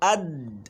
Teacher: when you are pronouncing the letter Dal, the makhraj closed totally.